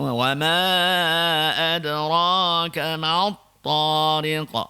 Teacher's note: Ma tu tipis, ta tu tebal